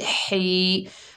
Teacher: हा को हलक के दरमियान से अदा करेंगे